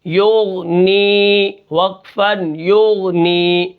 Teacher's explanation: غین کو ہم بالکل قلقلہ نہیں کریں گے